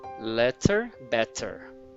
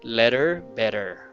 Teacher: they're using a true T